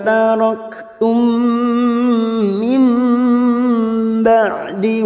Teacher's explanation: mim sukun bertemu mim namanya bacaan idgham mimi ya, masuk ke huruf mim berikutnya dan ditahan selama 3 harokat